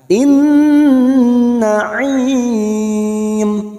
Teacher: nun yang bertasdid kita dengungkan selama 3 harokat.